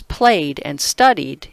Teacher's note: The words played and studied, in contrast, end in voiced consonants. So when the voiced consonants are at the end of the verb, the morpheme has the D sound.